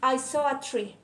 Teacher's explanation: in the sentence I saw a tree, the words I and a are unstressed while saw and tree are a stress.